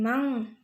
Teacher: terdapat hukum bacaan ikhfa ausath dibaca samar sambil dengung